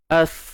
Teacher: Okey, ada nafas yang terlepas. Hams.